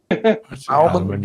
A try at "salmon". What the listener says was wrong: The L is silent, dude.